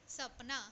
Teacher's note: उसके बाद स से दंत्य स है, दांत, दांत पे हम जब स कहते हैं ये वाला स, तो हमारे जो जीवा होते हैं ना, टंग, वो हमारे टीथ को, दांत को स्पर्श करते हैं, इस कारण इसको कहा जाते हैं दंत्य स